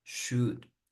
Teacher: De hecho, el should es más larga la U, should. And shouldn't is faster, you just say shouldn't, shouldn't.